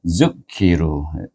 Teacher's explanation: Terus kepada kalimah zukiru, zal baris depan zu gabungkan dengan khaf yang hamas itu ki ru dibaca dengan mad asli dua harakat